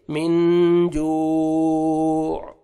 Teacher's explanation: last میں stop کریں گے، عین ساکن ہو جائے گا تو عین کا ساؤنڈ آنا چاہیے